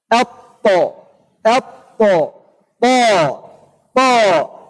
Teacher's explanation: إذا مخرج الطاء ومخرج التاء ومخرج الدال ثلاثة أحرف مكان مخرج واحد تختلف هذه الأحرف في صفاتها. إذا الطاء من طرف اللسان مع أصول الثنايا العليا